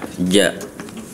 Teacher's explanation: diusahakan huruf ja itu kalau bisa enggak ada angin yang keluar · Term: huruf jim